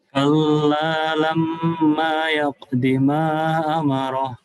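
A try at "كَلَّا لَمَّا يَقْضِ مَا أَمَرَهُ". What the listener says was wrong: Ma-nya 4 harokat. Ma amarah. Diulang.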